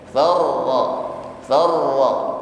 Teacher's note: Maka di sini lebih tampak sifatnya ra, yaitu takrir, ya. Irti'adu taraful lisan, bergetarnya ujung lidah. Namun di sini getarannya harus lembut, birti'adun khafiyyah, dengan getaran yang lembut, ya. · Namun di sini getarannya harus lembut, birti'adun khafiyyah, dengan getaran yang lembut, ya. Artinya bukan far, tidak berlebihan, ya.